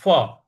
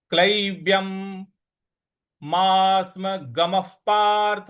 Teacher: ग म के बाद जो विसर्ग है उसके आगे प है, इस वजह से विसर्ग का उच्चारण हमें फ ले आना है, फ।